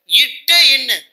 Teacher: நாக்கின் நுனிப்பகுதி அன்னத்தின் நுனிப்பகுதியை பொருந்துவதால் உண்டாகிறது